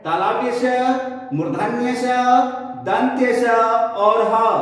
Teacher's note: तालु से उच्चारण होने के कारण इसका नाम तालव्य स है। तालु से थोड़ा ऊपर मूर्धा से उच्चारण होने के कारण इसका मूर्धन्य स है। दांत से उच्चारण होने के कारण इसका दंत्य स है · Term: ऊष्म